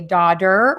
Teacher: daughter and slaughter are pronounced with a variation of the T sound, which sounds like a D